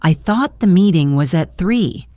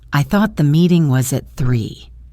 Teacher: the little rise and fall on the word thought